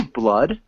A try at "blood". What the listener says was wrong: Blood. Yeah. Instead of blued, it's blood.